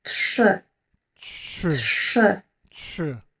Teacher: Try to connect t and sh to make tsh, and then mouth movement for which is like blowing a kiss.